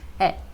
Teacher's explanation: Como se você estivesse começando a falar um A e terminasse falando um E.